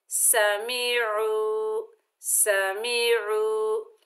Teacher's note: आइन के ऊपर पेश है, आगे वाव साकिन है, ये वाव मद्दा है। एक अलिफ की मिकदार खींच कर पढ़ेंगे।